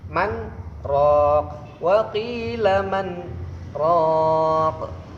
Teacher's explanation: cara bacanya yaitu berhenti selama 2 harokat tanpa mengambil nafas. Man raq, wa qila man raq. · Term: saktah